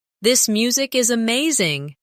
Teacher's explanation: Stress amazing to show enthusiasm.